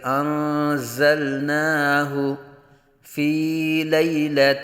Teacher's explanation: اِنَّا انزلناہ، نون ساکن کے بعد حروف اخفاء میں سے زا آ رہا ہے، یہاں اخفاء ہوگا یعنی غنہ کریں گے۔ زا کو سیٹی کی طرح تیز آواز نکال کے پڑھیں گے